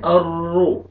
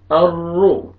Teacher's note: راشد ار را پیش رو الرو را کو پر کریں گے الرو موٹا کر کے پڑھیں گے را کو